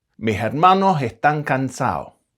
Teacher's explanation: In parts of Andalusia, the Canaries, and lowland areas of South America, S's can become H at the end of syllables.